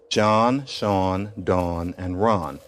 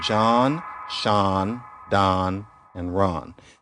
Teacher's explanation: What is written aw is pronounced ah by increasing numbers of people.